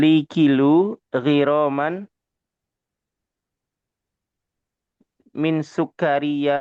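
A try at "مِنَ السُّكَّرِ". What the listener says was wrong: Alif lamnya mana alif lamnya?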